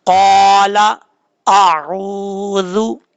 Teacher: आऊज़ु, पहले हमजा को सख्ती से पढ़ना है, आइन को नॉर्मल तरीके से पढ़ना है, आइन के बाद वाव है, एक अलिफ की मिकदार लंबा करके पढ़ना है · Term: वाव मद्दा